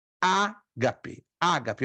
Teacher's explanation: Eu dou a ênfase no primeiro alfa. Ainda que pela lógica, a acentuação maior deveria estar na segunda.